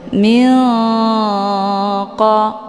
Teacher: Cara bacanya, nunnya disamarkan kemudian siap-siap menuju ke huruf qaf. Min qa. Jadi jangan dibaca min qa ataupun jangan langsung didengungkan min qa. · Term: ikhfa ab'ad